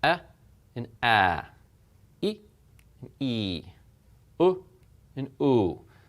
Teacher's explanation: the difference is it's the same sound you just hold it longer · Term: long vowels